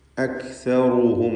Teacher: സാക്കിനത്തായ കാഫ് അതിൻ്റെ ഷിദ്ദത്തും ഹംസുമൊക്കെ കൊടുത്ത് ഉച്ചരിക്കുക. അക്സറു, റാഇന് തഫ്ഖീം കൊടുക്കണം.